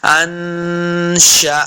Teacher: کاف پیش میم کم، اس کاف کو موٹا نہیں کرنا۔